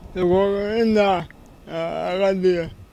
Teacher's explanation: Severely strained, strangled phonation. Articulation is quite unclear.